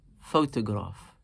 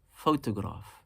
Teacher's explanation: Three syllables, and naturally we slightly emphasize the first one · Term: nabr on the first